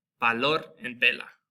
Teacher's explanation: there's no difference between the English B and the English V sound in Spanish. So it sounds just like a B, basically.